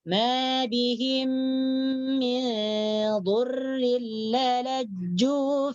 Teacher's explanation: Jadi mim mati bertemu dengan mim hidup dibaca dengan dengung, dibaca idgham dan dengung ni. Mim mati bertemu mim. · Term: idgham mislain